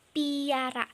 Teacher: dihasilkan dengan cara tengah lidah dinaikkan ke arah langit-langit keras atau palatum sehingga terdengar bunyi sertaan Y. Contohnya nih pada kata piara. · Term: palatalisasi